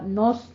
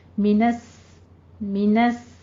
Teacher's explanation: نون باریک رہے گا، صاد کو پر پڑھنا ہے اور آگے واو کو بھی پر نہیں کرنا آپ نے.